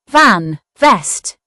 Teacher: The letter V has a voiced sound made by placing top teeth on bottom lip and vibrating. It always makes the V sound.